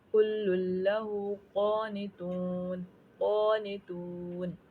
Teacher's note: तून पे वाव मद्दा हो रहा है, यानी वाव साकिन से पहले पेश आ रही है, तो वाव साकिन से पहले पेश आ जाए तो क्या होता है, वाव मद्दा कहलाता है। और नून पे आयत मुकम्मल हो रही है, इसलिए हमें नून साकिन कर देना है। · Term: खड़ी ज़बर